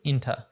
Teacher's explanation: there's a schwa sound there in the second syllable, so it becomes inta.